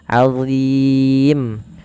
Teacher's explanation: Azim, Allah tidak dibaca dengan zim tapi azim, tebal huruf dha-nya, pangkal lidah kita terangkat. Allah, ujung lidahnya sebagaimana zal, azim.